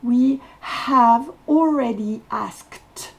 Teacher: le E ne se prononce pas à la fin et le D va se prononcer t we already asked je vous rappelle on met la langue entre